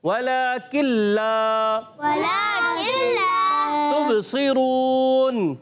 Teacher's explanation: वाला किल्ला, ऐसा बात बच्चे पढ़ते हैं वाला किल्ला, नून की आवाज़ भी आ रही होती है, लाम की आवाज़ भी। भाई नून लाम में बिल्कुल मिल जाएगा।